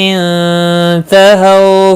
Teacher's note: ہو واولین ہے، تھوڑا نرمی کے ساتھ کھینچ کر ادا کریں گے